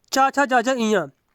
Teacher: चा वर्ग वाले जो अक्षर होते हैं, चा, छा, जा, जा, इया, ये तालु का स्पर्श करते हैं। इनको तालव्य व्यंजन कहा जाता है।